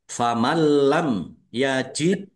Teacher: nun sukun bertemu dengan huruf lam bacaan idgham bila ghunah masuk dengan tidak mendengung. Maksudnya langsung masuk ke huruf lam, nunnya tidak dibaca dan tidak mendengung. · dal sukun bacaan qalqalah dibaca memantul ditampakkan pantulannya.